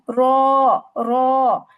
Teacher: আইন, মিম, র, র, যখন আমরা বলছি র, তখন দেখেন র কিন্তু একবারে আওয়াজ বন্ধ হচ্ছে না, আবার একবারে যে জারি থাকতেছে তাও না, মধ্যম পর্যায়ে হচ্ছে।